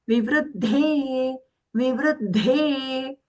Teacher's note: Half da is aghata vru, and then the dhe, when we say the dhe, that is mahaprana and long.